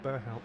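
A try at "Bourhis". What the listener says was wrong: Yeah, the H isn't pronounced, and like the T really isn't even pronounced either if you're like in France.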